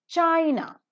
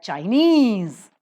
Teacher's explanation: China the first syllable is accented but Chinese the second syllable is accented